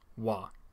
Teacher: it has turned into a high-tone labial approximant, wa. To be honest, I'm not entirely sure what to say about this change.